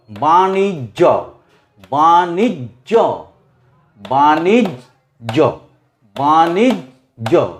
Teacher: জকে উচ্চারণ করব কিন্তু একটা অল্প একটা জোরে।